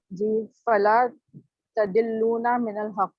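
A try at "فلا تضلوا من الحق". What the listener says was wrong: अच्छा, ये तदिल्लूना आप क्यों कह रही हैं? जरा गौर करें ना, ये कौन सा ला? यही बात मैं आप लोग कह रहा था कि वो जो नहीं वाला है ना, और उसको ला ऊपर जाके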